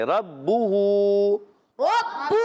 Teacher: را پر زبر ہے، پھر پڑھیں گے موٹا کر کے پڑھیں گے. با تشدید والا ہے، رک کر ادا کریں گے.